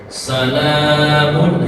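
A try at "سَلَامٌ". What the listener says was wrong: Kepanjangan la-nya. Salamun, lamun, satu ayunan saja sama hattanya juga satu ayunan saja.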